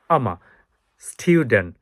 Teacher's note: আমার স্টুডেন্ট আমাটা down হবে আর স্টুডেন্টের এটা হবে উঁচা হবে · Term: লো স্ট্রেসে